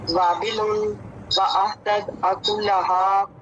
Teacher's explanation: واو کے بعد الف مدہ ہے، اس کو ٹائم دیں گے